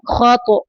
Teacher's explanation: خا کو اوپر پڑھنا ہے تو کو کلکلا کرنا ہے